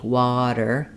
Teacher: Versus if I'm saying something like water, I'm going to hear a flap there. It's going to sound more like a D, water. In written, I go up to make that T, written, and then I don't let the T out.